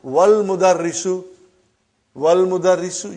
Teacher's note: you did not pronounce Hamza. Okay? Because it's Hamzatul Wasal.